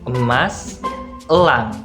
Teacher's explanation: untuk setiap pengucapan vokalnya itu dia di antara semi tertutup dan juga semi terbuka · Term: vokal E